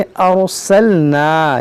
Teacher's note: रा साकिन से पहले ज़बर है, तो रा को भी पुर यानी मोटा पढ़ें। रा साकिन से पहले ज़बर हो या पेश हो, रा को मोटा पढ़ा जाता है।